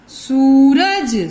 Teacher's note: सूरज स के ऊपर जब हम उच्चारण कर रहे हैं ना, तो हमारा मुंह गोल हो रहा है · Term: दीर्घ